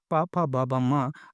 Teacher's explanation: पावर के व्यंजनों को बोलने के लिए हमारे ओंठ एक दूसरे से टच होते हैं। पा फा बा बा मा, अगर आप ओंठों को खोल लें, दोनों हाथों से ओंठों को पकड़ लें और नीचे ना आने दें, तो आप पा फा बा भा मा ये बोल ही नहीं सकते। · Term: ओष्ठ